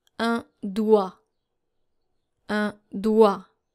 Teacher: So you don't hear the G and the T.